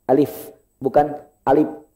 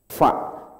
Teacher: fa itu yang aktif satu bibir Pak, bibir bawah bagian dalam ketemu dengan gigi seri atas